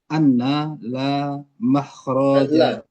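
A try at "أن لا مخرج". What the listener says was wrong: Bukan ana, tapi an.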